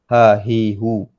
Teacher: Huruf ha keluar daripada pangkal kerongkong. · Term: ha besar